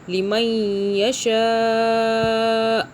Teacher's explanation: رکنے کی صورت میں حمزہ پر آپ نے اس کو ساکن کر کے ہلکی سی آواز دینی ہے